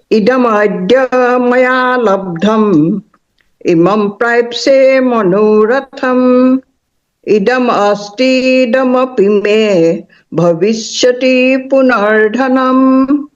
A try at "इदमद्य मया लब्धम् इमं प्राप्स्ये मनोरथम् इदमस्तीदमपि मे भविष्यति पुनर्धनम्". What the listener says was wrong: भविष्यति पे कम रुकेंगे, भविष्यति